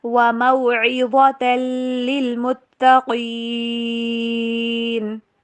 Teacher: پہ سٹریس نہیں دیا جائے گا، اور متقین ایسے نہیں پڑھنا، تا کے اوپر بھی سٹریس دینا ہے کیونکہ یہاں پہ تشدید آ رہی ہے · موٹا کریں گے تو وا بن جائے گا، وموعظۃ للمتقین۔ دیکھیں للمتقین میں پہلا جو لام ہے اس کے اوپر تو آپ نے سٹریس دینا ہے، لیکن دوسرے کے اوپر جزم ہے، یہاں پہ سٹریس نہیں دیا جائے گا